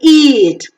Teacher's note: is front, close, unrounded, long vowel